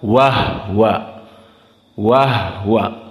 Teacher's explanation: Kemudian ayat yang berikutnya, wa huwa yakhsha, perlu diperhatikan ha di sini disukunkan menurut qiraah al-Kisa'i. Semua kalimat wa huwa dibaca wahwa, wahwa.